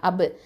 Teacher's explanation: கல்கலத்து சுகரா கொடுக்கணும் ப சுக்குனுக்கு.